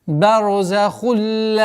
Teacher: Здесь у нас ассимиляция без назализации, после которой долгота в размере двух огласовок фатха.